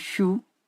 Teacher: For example, the word shoe, in this word, the sh sound is post-alveolar fricative. It is primary articulation. · It is primary articulation. But because it is followed by a rounded vowel, so this sh sound also go through lip rounding